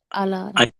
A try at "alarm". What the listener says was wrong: அலாம் அலாம்னு அதை படிக்கணும். அலாம். இந்த ஆர் வந்து சைலண்ட். அலாரம்னு தமிழ்ல சொல்றது, இங்க அலாம்னு சொல்லுவாங்க.